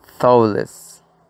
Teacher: lleva la acentuación o fuerza en la primera sílaba